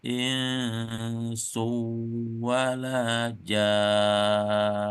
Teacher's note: nun yang bertasdid itu didengungkan dengan berhenti kurang lebih 2 ketukan